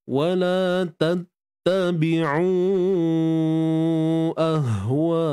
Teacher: Hamzah berada atas, pangkal kerongkong. Ha, sukun pun pangkal kerongkong. Matikan ha dengan dinamik.